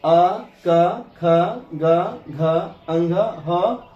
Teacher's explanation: और ये आ, का, ख, गा, घ, अंघ, ह और विसर्ग के उच्चारण में हमारी आवाज या ध्वनि कंठ से निकलती है